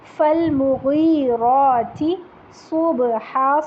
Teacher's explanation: یہاں پہ غین اور را دونوں موٹے حروف ہیں، ان کو موٹا ہی پڑھیے گا